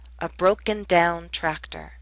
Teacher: Both parts are stressed, but the second receives more stress.